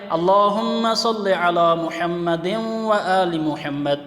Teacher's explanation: محمد یہاں دال کے نیچے دو زیر کی تنوین ہے، اس کو آگے واو میں ملا دیتے ہیں، اس کو تجوید میں ادغام کہا جاتا ہے۔